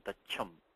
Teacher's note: this talavya sha becoming this mahaprana cha